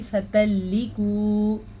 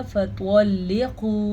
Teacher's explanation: فَطَلِّقُوهُنَّ، اگر کوئی حرف آپ سے پر نہیں نکل رہا تو میں آپ کو ایک ٹرک بتاتی ہوں، وہ یہ ہے کہ اپنے منہ کو گول کریں اور دونوں ہونٹوں کو گول کرتے ہوئے اس لفظ کو ادا کریں تو وہ لفظ موٹا ادا ہوگا